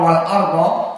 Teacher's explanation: Maka untuk yang pertama wal arda seperti ma'ruf di qiraah Warsh adalah an-naql. Qiraah Warsh an-Nafi' tidak membaca hamzah.